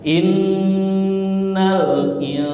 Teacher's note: nun sukun ketemu Sin ikhfa Hakiki samar-samar gunah